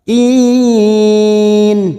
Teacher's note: Wal yatama wal masakin, wal alif lam qamariyah, wal masakin, sa fathah berdiri 2 harakat, sakin, kin mat arid li sukun karena kita memilih wakaf di sini kita panjangkan 4 harakat, kin.